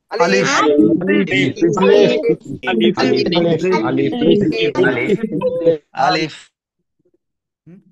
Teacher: মুখের খালি জায়গা থেকে আলিফ অক্ষরটা উচ্চারণ হবে